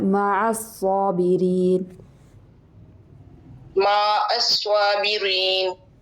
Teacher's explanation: یہ لمبا نہیں ہوگا، میم کے اوپر صرف ایک زبر ہے